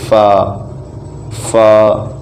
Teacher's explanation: آگے فا، یہ دوسروں کی نسبت تھوڑا مختلف بھی ہے کہ یہ اوپر کے دانتوں کے کنارے اور نچلی ہونٹوں کے تر حصے سے ادا ہوتا ہے، اس طرح سے فا فا۔